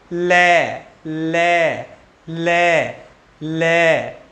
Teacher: वायु जीवा के एक या दोनों ओर से निकल जाए, दोनों ओर से निकल जाए, निकल जाए, ओब्लिक बगल से निकल जाए, बगल, बगल से निकल जाए, तो वहां क्या होगा, वहां होगा पार्श्विक व्यंजन।